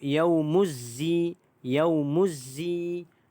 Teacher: alif lam tersebut kita tidak bunyikan. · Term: alif lam syamsiah